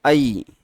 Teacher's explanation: अ का कंठ हो गया और इ का तालु इसीलिए इसका उच्चार स्थान क्या होगा? कंठ और तालु दोनों